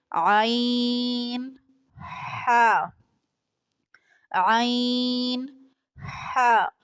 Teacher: حلق کے درمیانی حصے سے عین اور ح ادا ہوتا ہے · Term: وسطی حلق